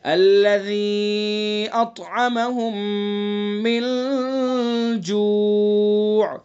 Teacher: الَّذِي نرمی سے پڑھیں گے ذال کو، اور ذال کے اندر مد کریں گے چونکہ یا مدہ ہے اور یا مدہ کے بعد حمزہ ہے تو اس لیے اس کے اندر مد ہوگا اور یہ مد منفصل ہوگا.